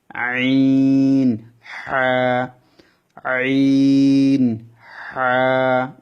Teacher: কন্ঠর মাঝখান থেকে কন্ঠ ডাবিয়ে চিকন সুরে উচ্চারণ হবে